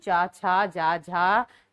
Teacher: तालु से बोले जाते हैं